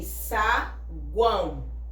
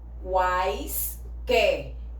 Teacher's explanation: Quando a gente pronuncia, esse U, A, I vai ficar juntos na mesma sílaba. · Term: Tritongo